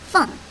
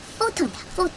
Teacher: 이빨을 물고 아랫입술을 물고 바람이 빠져나가는 F 소리가 나면서 H는 묵음으로 바뀝니다. 그래서 PHONE 그럼 폰이 되죠.